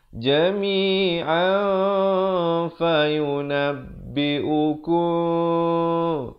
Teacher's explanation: Tapi bila datang fa disamarkan bunyi nun itu di antara huruf fa dengan 2 harakat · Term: ikhfa hakiki